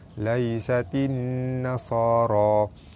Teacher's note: baris atas bertemu ya di tengah kalimah, hukum dia mad lin dibaca lembut dan panjang 2 harakat